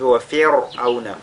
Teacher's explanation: la lettre ra ici est lue, n'est-ce pas, avec at-tarqiq parce que les sakina précédé de la lettre kasra.